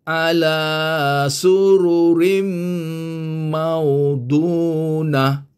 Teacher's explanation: Rim ini dua harkat. Kena dengungkan dia. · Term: Idgham dengan dengung